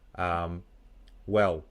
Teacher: I don't say the L at all. My tongue stays flat